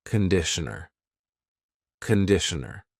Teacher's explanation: The first vowel is a schwa.